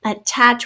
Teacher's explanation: we have the schwa sound at the beginning